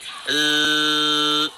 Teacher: seperti lebah yang berdengung, desisannya tajam. Dengan alunan suara yang mengalir, kedua karakteristik dalam "Zai"—rakhawah dan safir—harus dirasakan dengan jelas.